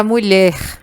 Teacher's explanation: A palavra mulher, a sílaba mais forte é o lher. Então, a gente também diz que é uma palavra oxítona.